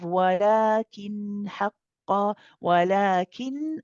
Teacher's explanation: the lam with the mad alif here is stretched for 2 counts. It's harakat, mad tabi'i. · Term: mad badal